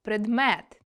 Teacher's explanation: у слові предмет наголос падає на друге е, його ми чуємо дуже чітко · А от перше е опинилося в слабкій позиції, тому тут чуємо чи то е, чи то и